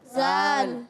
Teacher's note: زبان کا سرا اوپر کے دانتوں کے جب کناروں سے لگتا ہے تو ادا ہوتا ہے زال.